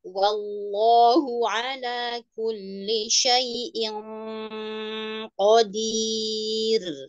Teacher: Ikhfa huruf qaf langsung menempel di huruf qafnya ya.